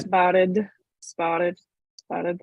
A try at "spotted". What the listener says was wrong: Okay, now, when you do spotted, you're not only touching behind your incisors, your tongue is also kind of clipping to your teeth laterally. Can you feel with your brain, can you imagine where your tongue is pressing against? Maybe against your molars or your but on the sides, is it pressing